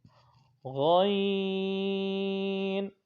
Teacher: جو غین ہے وہ حلق کے اوپر والے حصے سے ادا ہوتا ہے۔ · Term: حروف حلقیہ